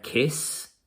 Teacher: But some of our sounds are unvoiced. We just have the air coming out. But if I feel my throat, there is no vibration. There's no movement there. · the s sound at the end of kiss, there is no sound coming out. It's not voiced. This is an unvoiced verb. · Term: unvoiced sounds